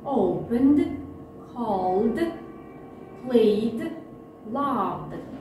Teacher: Если глагол оканчивается на звонкий согласный звук, кроме звука д, то окончание ed мы произносим как д.